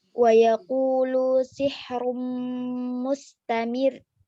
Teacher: Apabila diwakafkan ro mati dibaca tarqiq atau tipis, sebab sebelumnya huruf yang berharokat kasroh agar bacaan ro bertasydid di akhir kata, kemudian disukun karena wakaf, maka agar tepat bacaannya huruf hidup sebelumnya agak sedikit dihentakkan suaranya.